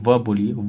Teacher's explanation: देखिए आपका दांत और ओष्ठ दोनों साथ में टच करेगा